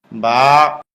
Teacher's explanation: আলিফ। বা, স্বাভাবিক অবস্থায় মুখ যেমন ঠোঁট দুইটা মিলে থাকে, মিলানো ঠোঁট খুলে দিলে হয়ে যায়